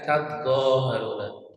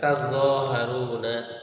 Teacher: dibaca dengan mengidghamkan ta, idghamut ta. Ya, mengidghamkan ta fil asli fil dha'i, pada asalnya pada huruf zo.